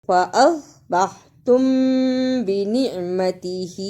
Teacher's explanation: صاد کو موٹا پڑھنا، ادغام شفوی ادا کرنا اور ہا کنچے جو کھڑی زیر ہے اور چھوٹی مد، ان دونوں کو صحیح ادا کرنا۔